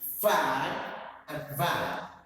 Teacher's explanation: Labiodental, active articulator is lower lip and passive articulator is upper teeth. So fa and va and fan and van.